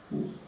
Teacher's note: The short U is a back vowel.